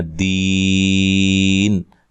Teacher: دی یا مدہ ہے تو وقف کی صورت میں مد کر سکتے ہیں. دین ایسے وقف کر سکتے ہیں.